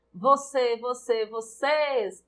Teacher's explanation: Em vocês, a sílaba tônica é o ces, oxítona também.